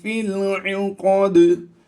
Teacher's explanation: हालत वक़फ़ में हमने यहाँ पर कलकला किया है।